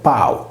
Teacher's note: In sardo, il Pau, cui è stata fatta fuori per sincope la consonante /L/ di Palu